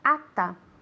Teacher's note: at ends with a T, the next word begins with the TH, así que esa T desaparece.